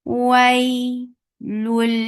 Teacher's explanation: Lam, this is idgham without gunna, so you are not keeping the sound in your nose at all. Don't keep it in your nose.